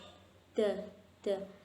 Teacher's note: ujung lidah dari arah permukaan atasnya bertemu dengan daging tempat tumbuh gigi seri atas. Pangkal lidah tidak terangkat. Jadi yang terangkat itu ujung lidah dari atas, dari arah permukaan. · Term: huruf da